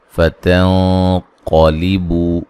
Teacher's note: قاف کو موٹا ادا کریں گے، مد اصلی ہے، فتنقلبوا یہاں نون ساکن کا موٹا اخفا ہے ، قاف کو موٹا ادا کریں گے، بو و مدہ ہے،